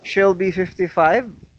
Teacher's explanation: here this detail answers the question how old is she so 55 is the one that is stressed because it is the most important information